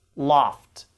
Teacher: words that end with s t or f t or p t they have a regular t sound not an unreleased t sound